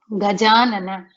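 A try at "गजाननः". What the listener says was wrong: Gajananaha. You should pronounce the visarga as well, because this is a pullinga word. Akara followed by visarga is the ending. Gajananaha.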